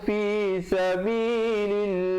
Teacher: Lafzul jalalah datang sebelumnya baris kasrah, dibacakan nipis 2 harakat.